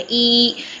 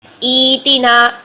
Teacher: اب ابدال وجوبی کا قاعدہ اپلائی ہوگا، پہلا حمزہ متحرک ہے دوسرا ساکن ہے، تو ابدال وجوبی کا قاعدہ کہ دوسرے حمزہ کو پہلے کی حرکت کے مطابق چینج کرنا ہے حرف مدہ میں، ٹھیک ہے۔ اب پہلا حمزہ کسرہ والا ہے تو کسرہ کو 2 حرکات لمبا کر دیں، ای، یہ یا مدہ میں چینج ہوگا، ایتینا، اس طرح سے اس کا آغاز کر کے پڑھیں گے۔